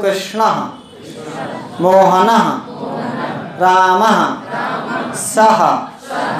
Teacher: जहां जहां भी विसर्ग होगा वहां एच जैसी ध्वनि आएगी अंग्रेजी में बोले तो हिंदी में बोले तो हा जैसी ध्वनि